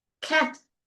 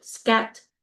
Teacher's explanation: So cat versus scat. You don't feel that aspiration.